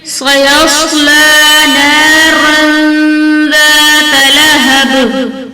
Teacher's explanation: صاد حرف مستعلیٰ میں سے ہے، اسے پر پڑھیں گے اور دو زبر کی تنوین کے بعد حرف اخفا میں سے زال ہے، تو یہاں پر اخفا کا قاعدہ ہوگا، دو زبر کی تنوین کی آواز کو چھپا کر پڑھیں گے، جیسے نارا ذات لہب۔ با پر قلقلہ کریں گے، زال کو انتہائی نرمی کے ساتھ ادا کریں گے